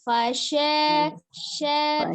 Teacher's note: Tidak dibantu dengan bibir, shinnya huruf al-lisan, fasya, sya, tidak dengan kemajuan kedua bibir.